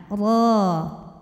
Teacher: Huruf ra dibunyikan secara tafkhim karena berbaris tanwin fathah, maka dibacanya ditebalkan.